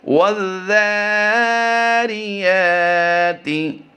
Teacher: الف اور لام مدغم ہو جائیں گے ذال کے اندر، تو واو ذال زبر وز کی ادائیگی کریں گے۔